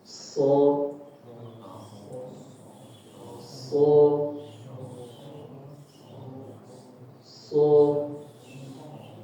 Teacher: Huruf sad dapat dibedakan dari huruf zai dan huruf sin dengan sifat al-istilla yaitu naiknya suara ke arah langit-langit atas. · Huruf shad bak kita lihat belakang lidahnya. Belakang lidahnya itu menaik ya.